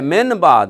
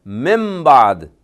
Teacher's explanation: اقلاب کا مطلب یہ ہے کہ وہ لکھی ہوئی تو نون ہے اس سے پہلے لیکن پڑھنی میم ہے۔ جیسے من اور بعد کو ملایا جائے تو کیا بنتا ہے، لکھی ہوئی تو نون ہے من بعد لیکن پڑھنی کیا ہے، مم بعد۔